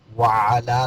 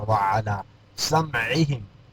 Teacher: وعلا لام کے اوپر کھڑا زبر ہے، الف مدہ کی آواز دے دے گا